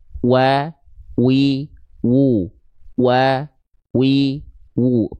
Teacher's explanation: jadi harus muncung mulutnya ketika melafalkan huruf wau · asyafatain artinya adalah kedua bibir kedua bibirnya diapain lyafatil w mu kedua bibirnya dengan posisi seperti maju seperti mengucapkan huruf u